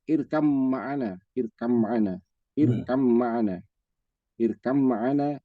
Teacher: pertemuan dua huruf yang berbeda tetapi makhrajnya atau tempat keluarnya sama, ba dan mim di bibir. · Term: idgham mutajanisain